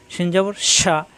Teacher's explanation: যখনই জবর আসবে শিন জবর শা অর্থাৎ হরকত আসলে উচ্চারণ তাড়াতাড়ি শিন জবর শা জিহ্বার মাঝখানে উপরে তালুতে